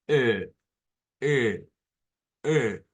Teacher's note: como una e abierta pero con la lengua llevada hacia la mitad